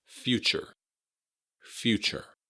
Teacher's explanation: the stress is on the first syllable, few, and the TU sound in the middle adds kind of a ch, like a CH.